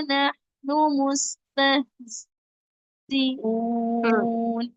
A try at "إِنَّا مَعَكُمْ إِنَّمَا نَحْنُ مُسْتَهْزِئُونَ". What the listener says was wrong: آپ کا سانس ٹوٹ رہا تھا، آپ معاکم پہ وقت کری، ٹھیک ہے، تاکہ آپ کا تمام ہمس وغیرہ صحیح سے پڑے جائیں، جیسے کہ نحنو ہاں میں ہمس، مستہزئون سین میں سفید، ہاں میں ہمس، ٹھیک ہے، زام میں سفید جہر والی.